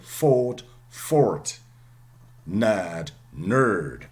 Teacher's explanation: RP is non-rhotic which means the R is not always pronounced and the R is not pronouncing this the rule before consonant